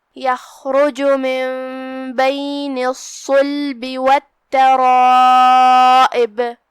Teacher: یہاں مد واجب متصل ہے، ہم اپنی آواز 4 مد کے برابر لمبی کریں گے۔ آخری میں ہم با پہ روکیں گے تو اسے ہلائیں گے کیونکہ یہاں با کا حکم ہے قلقلہ۔